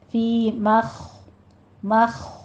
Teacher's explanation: فی مخ خو کو پر کر دینا ہے، خو پہ ہمس کی آواز بھی آئے گی اور اس کو پر پڑھا جائے گا۔